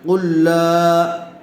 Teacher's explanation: حرف مدہ کے بعد حمزہ دوسرے کلمے میں آئی ہوئی ہے، اس لیے مد منفصل کا قاعدہ ہوگا، لام کو کھینچ کر پڑھیں گے